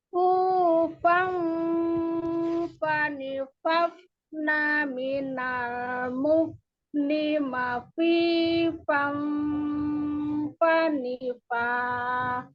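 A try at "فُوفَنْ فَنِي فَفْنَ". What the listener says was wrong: Ini kurang disukunnya, kurang terdengar keluar udaranya. Kurang hams, kurang rokhwah. Jadi fu fan fani fafna. Harusnya tuh fafna. Ini tadi fani fafna minal. Terdengar nggak bedanya? Jadi jangan dibegitukan, jangan fani fafna minal. Terlalu sedikit keluar udaranya.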